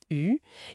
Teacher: il faut garder la langue presque au même endroit que pour le i, mais avancer et arrondir les lèvres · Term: ce son U